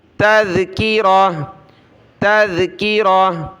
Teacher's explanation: جب گول تا پر رکیں گے تو ہا پڑھنا ہوتا ہے اس کو وقف میں